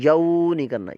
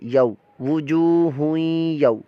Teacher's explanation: زبر یو، واو ساکن سے پہلے زبر ہے، یہاں پر واو لین کا قاعدہ، ہم لمبا نہیں کریں گے